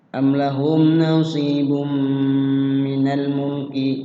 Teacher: am adalah memiliki hukum tajwid idhar syafawi, yaitu jelas dibaca di bibir karena ada mim mati ketemu dengan lam. Mim mati ketemu dengan lam.